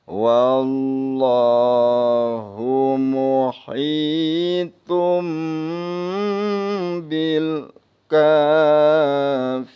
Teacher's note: karena sebelum lam di fathah maka dibaca tafkhim